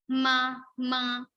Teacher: when we say ma, ma, we have little vibration on our nose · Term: nasal consonant